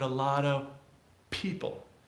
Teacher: going straight to the P instead of pronouncing the F